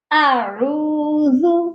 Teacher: اس میں حمزہ اور عین دونوں کی آوازیں، دونوں کے ساؤنڈ الگ الگ پرومیننٹ ہونے چاہیے۔ سب سے پہلے حمزہ اور پھر عین، اعوذ۔